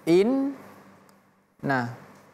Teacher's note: inna masuk dulu ke yang mati in baru pindah ke yang hidup na inna tapi tidak boleh terputus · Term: huruf tasydid